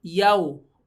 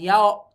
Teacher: Jadi wawu sukun itu bukan o tapi u atau w gitu ya. Yau ya, bukan yao tapi yau.